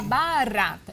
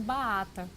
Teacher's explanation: ela tem que levantar a ponta da língua e fazer uma vibração. Como ela está presa, essa língua, essa preguinha, ela é curta, ela não vai conseguir levantar a ponta da língua.